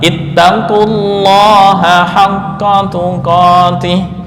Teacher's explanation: karena lam didahului oleh dommah maka lam pada lafal Allah dibaca tebal sesuai kaidah